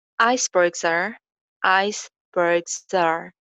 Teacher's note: बर्ग्स की ending sound जो है ज, वो आर में लिंक हो जाएगी